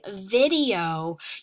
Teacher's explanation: when you say video you can hear that long e and you can hear the long o sound they stand separately